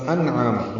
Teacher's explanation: عین وسط حلق سے ادا کرتے ہوئے 2 حرکات لمبا کریں گے۔ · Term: اظہار حلقی